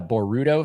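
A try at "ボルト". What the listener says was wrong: I hate how you pronounce the Ru. Like you put the emphasis on the Boru. Boruto. Boruto.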